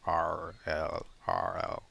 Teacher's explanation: And if you like actually pronounce it and notice where you're putting your tongue, R and L, the only difference is that your tongue is further back for the R